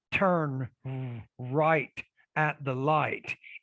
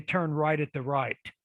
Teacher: they're going to say the r and the l both as an r